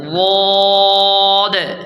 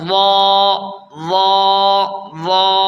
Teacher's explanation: ضاد میں اوپر کی 5 داڑھیں اور زبان کی کروٹ جب اوپر کی 5 داڑھوں سے لگے تو یہاں سے ضاد ادا ہوتا ہے، اور ضاد حرف ضاد لمبا ہے، مستطیل ہے، یعنی لمبا ہے ظا کے بنسبت۔ دیکھیں اس لیے ہم حرف ضاد کو 5 الف کے برابر کھینچتے ہیں ضاد، اور ظا اس کو 1 الف کے برابر کھینچتے ہیں ظا ظا ظا۔